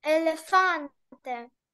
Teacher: Наголос на передостанній склад, нагадую.